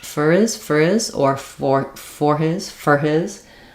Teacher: the H is optional in a word like his when it's unstressed in a sentence like this